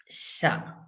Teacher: sa your tongue is flat right behind your teeth sa right when you're saying the Sha in Shiva your tongue is like little little bit curled up it is not as flat as when you are saying sa